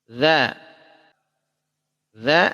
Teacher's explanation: ujung lidah bertemu dengan ujung gigi seri atas. Lidahnya istifal, tidak terangkat. Infitah, terlepas. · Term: huruf za